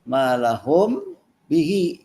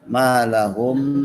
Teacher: Malahum bihi itu ikhfa syafawi, mim bertemu ba, ya. Ikhfa syafawi bacanya malahum, harus tertutup, terkatup ya